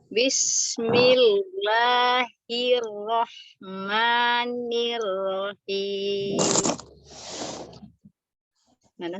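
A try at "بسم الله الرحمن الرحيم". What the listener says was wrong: Ro-nya tidak dipanjangkan ya, Mi. Rohim, begitu ya. Ya, ro-nya tidak dipanjangkan. Bismillahirrahmanirrahim.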